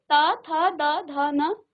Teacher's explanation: इसका उच्चारण स्थान है आपके दांतों पर। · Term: त वर्ग